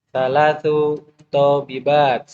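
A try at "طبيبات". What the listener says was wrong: Itu tolibat itu. Kalau tobibat, baknya yang panjang. Tobibat. Jangan ke bawah sama tolibat. Ini dokter.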